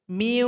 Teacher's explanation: Sifat gunnah atau sifat dengung pada huruf nun terbawa kepada huruf waw. Sehingganya waw dengung. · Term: idgham naqis